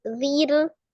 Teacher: Tipis, karena sebelum ro sukun sebelumnya ada huruf berharokat kasroh. Maka ro-nya dibaca Tarqiq. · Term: tipis tarqiq